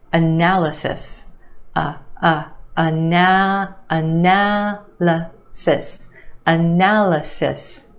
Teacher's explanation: there are 2 schwas in this word. The first syllable and the third